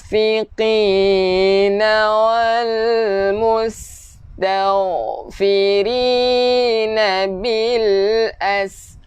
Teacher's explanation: Nun yang kosong kita kena dengung